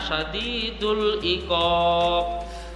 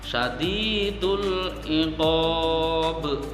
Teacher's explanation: Syadidul iqab itu harus dipantulkan lebih berat lagi, jangan sampai tidak dipantulkan ya, karena itu qalqalah kubra, itu salah sekali.